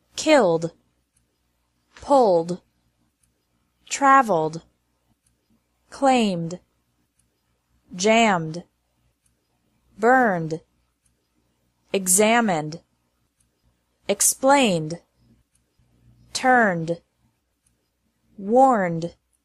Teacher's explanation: Ed is pronounced like D after verbs ending in an L, M, or N sound.